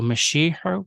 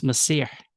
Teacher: Mashiach with a sh sound versus Masih with an s sound, right? Shin versus sin, the name of the letters.